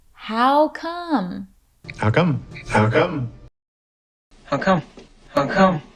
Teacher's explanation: listen for the falling intonation with this phrase how come The Voice falls on the final syllable